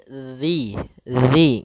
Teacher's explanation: makhrajnya adalah ujung lidah kita menempel dengan gigi seri atas, sehingga atau bisa kita gigit sedikit zi gitu ya. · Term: huruf zal